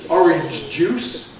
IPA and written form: ˈɒrɪnʤ ʤuːs (orange juice)